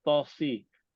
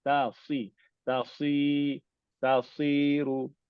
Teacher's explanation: Sebab kita nak sebut sod tebal. Jadi ta kita jadi tebal.